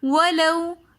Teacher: وَلَوْ میں واو لین ہے تو اس لیے ہم اس کو بغیر کھینچے پڑھ رہے ہیں۔ وَلَوْ ہم نے واو کو بالکل بھی نہیں کھینچا۔